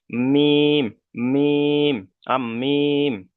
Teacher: মিমের মাখরাজ হলো দুই ঠোঁটের শুকনো অংশ মিলিত হয়ে উচ্চারিত হয়। তাহলে শুকনো অংশ বলতে আমাদের ঠোঁটের দুটো অংশ আছে, একটা হলো বাইরের সাইডে মানে এটা হলো শুকনো অংশ, একটা হলো ভিতরের সাইডে ভিজে অংশ, ঠিক আছে। · যেমন এই এরকম মিম, মিম, দুটো ঠোঁটের শুকনো অংশ দুটো গিয়ে ঠেকবে। মিম, মিম, মিম।